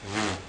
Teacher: the English V sound is made by lightly touching your bottom lip to your Upper Front Teeth